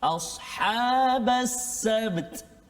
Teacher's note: Ba qalqalah dengan huruf ta. Bat kan. Jadi kena hati-hati kat situ.